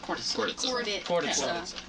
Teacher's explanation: there's like a D instead of a T when you pronounce it